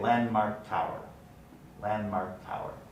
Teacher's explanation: The alveolar nasal is now followed by the bilabial nasal after the D has been deleted, resulting in a context for place assimilation to take place, and you get landmark tower.